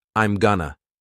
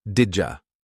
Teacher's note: I'm going to often sounds like I'm gonna and did you becomes didja